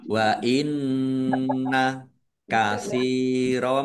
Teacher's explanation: nun tasdid dibaca gunah atau mendengung ditahan dua harakat